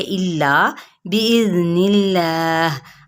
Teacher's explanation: اللہ سے پہلے زیر ہے تو ہم اس کو باریک پڑھیں گے